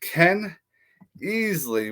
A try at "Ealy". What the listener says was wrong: It's pronounced Ealy. It's Ealy. A lot of people pronounce it Eli, but it's pronounced Ealy.